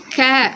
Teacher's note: நம்ம நாக்கோடைய முன்பகுதி நம்ம மேல் அன்னத்தை வந்து தொடும்போது க அப்படிங்கிற எழுத்து ஒலிக்குது